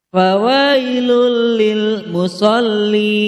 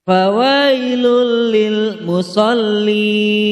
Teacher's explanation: Idgham bila gunah, karena domah tanwin bertemu dengan huruf lam. Cara membacanya adalah tanpa berdengung. · mad lin, karena huruf ya sukun didahului oleh huruf wawu berharokat fathah. Cara membacanya dibaca panjang 2 harokat. Idgham bila gunah, karena domah tanwin bertemu dengan huruf lam.